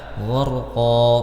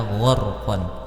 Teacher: a Mad thi gqo di sini terdapat hukum mad Iwat ya fathatain yang diwakafkan maka dibaca gqo bukan lagi dibaca gqon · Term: mad iwad